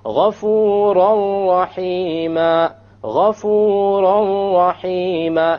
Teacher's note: You don't hear an N sound because you drop it.